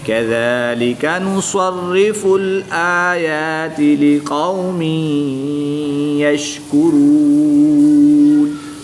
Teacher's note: کاف اور قاف میں فرق کریں گے، کاف کو باریک پڑھیں گے اور جو قاف نقطوں والی ہے اس کو پوری یعنی موٹا پڑھیں گے کیونکہ یہ حروف مستعلیہ میں سے ہے۔